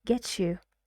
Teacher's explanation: The t and y sounds together become ch.